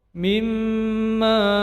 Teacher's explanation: mim bertasdid menjadi gunnah musaddah dipanjangkan 2 harokat